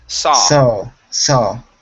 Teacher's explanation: So you're still pronouncing an ow at the end. Leave your mouth open. It's only an ah sound.